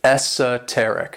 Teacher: this word has 4 syllables, and the stress is on that third syllable